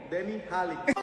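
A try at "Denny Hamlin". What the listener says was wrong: There is no way that Hamlin, he forgot the M in there. He says Denny Holly.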